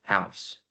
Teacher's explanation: we have the sound ha, and then we have the diphthong ow, and finally we have the sound s. So when we combine all of these sounds together, we get to the final word of house.